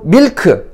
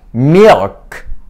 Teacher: 혀끝이 치경이 닿지 않습니다. 혀 뒷부분이 뒤로 당겨집니다. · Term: dark L